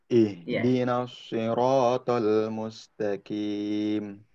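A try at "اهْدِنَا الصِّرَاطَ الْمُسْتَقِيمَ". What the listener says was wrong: Nah, hati-hati bedakan qa dengan ka. Qa agak ke dalam, tebal. Qa. Mustaqi. Qi. Tidak boleh ki.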